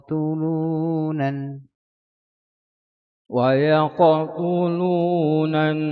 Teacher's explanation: Bacaan pada qalqalah di pertengahan dia kena baca secara sugra kecil ya. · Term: qqalah sugra